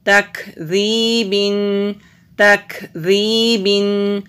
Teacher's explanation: یا سے پہلے زیر ہے، حروف مدہ ہے، ایک الف کے برابر لمبا کریں گے۔ · کاف ساکن ہے، اس کو باریک بھی پڑھیں گے اور یہاں پر ہم ہمس بھی کریں گے۔ ہمس کا مطلب ہوتا ہے سانس کا جاری رہنا۔